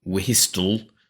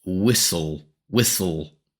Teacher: Of course, the h we do not pronounce. And the t we do not pronounce. So, it's not whistol, but it's whistle, whistle. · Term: silent letters